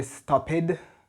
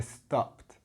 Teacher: so it actually sounds like a t at the end